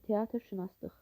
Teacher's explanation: İkincidə sözün kökü yazıldığı kimi tələffüz edilsə də leksik şəkilçilərdən birində keyfiyyət dəyişikliyi baş verir, düzdür. Lıq şəkilçi dıq kimi tələffüz olunur, kök isə olduğu kimi tələffüz olunur.